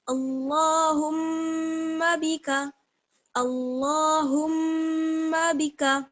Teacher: میم کی آواز کو ادا کر کے فوراً ہم با کی آواز نکالیں گے